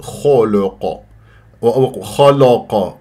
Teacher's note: الخاء والقاف مفخمه مرتبه ثانيه مفتوحه من احرف الاستعلاء اللام مرققه ولا انا اكور الشفاه لا في الخاء ولا في القاف اقول خلق خلق فخمت اللام فانت عندك تفخيم ترقيق تفخيم من